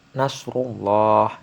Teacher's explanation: Lalu nasrullah. Nah, rullah ini memiliki hukum bacaan takfim karena ada lam jalalah sebelumnya berharokat domah, makanya disebut takfim atau dibaca tebal